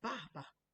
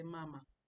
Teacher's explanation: for the dad is the fourth tone for the mother is the first tone